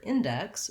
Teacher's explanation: we have first syllable stress, so the in part is actually stressed here. As a word, in is usually unstressed in a sentence, but in this word index, we have the in has to be longer and stressed.